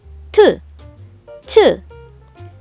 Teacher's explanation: 거칠게 센 바람을 뱉으면서 소리 낸다는 것만 다르고 드, 즈를 소리 낼 때처럼 혀끝을 윗니 뒤 입천장에 붙였다가 혀를 내리면서 소리 내는 글자들이죠. 그렇기 때문에 트와 츠도 끝소리로 소리 낼 때 혀끝을 다시 윗니 뒤 입천장에 붙이면서 읒, 드읒, 트읒, 즈읒, 츠읒.